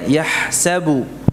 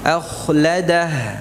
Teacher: Ya, jadi ha itu istifal tipis, kha itu apa? Isti'la, sifatnya tebal.